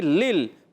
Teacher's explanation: پہلے لام کو دوسرے لام سے ملائیں گے، پہلے لام کی نیچے زیر ہے، دوسرے لام ساکن ہے، دوسرا لام ساکن ہے۔ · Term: ادغام بلا غنہ